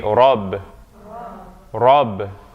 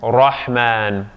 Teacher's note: when alif or fatha comes after the ra, it's going to sound like ah. It's that deeper sound, because ra is emphatic.